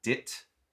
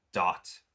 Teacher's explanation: the vowel sound in dit is much tighter, shorter, narrower, and dot is just a tiny bit rounder